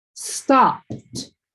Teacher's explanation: Even though you see that ed, the sound is t. So, the word's going to be pronounced like stopped.